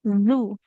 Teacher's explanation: Huruf zal ujung lidahnya tempelkan ke ujung gigi seri atas.